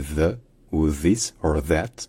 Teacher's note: c'est le pareil que le son anglais qui est fait en faisant passer le son entre la pointe de la langue et les dents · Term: son the